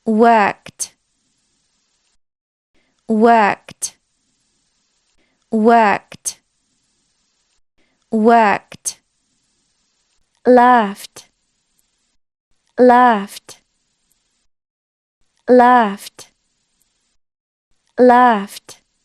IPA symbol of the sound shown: t